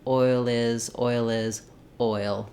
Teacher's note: change that L to more of a light L as you're linking it to the next word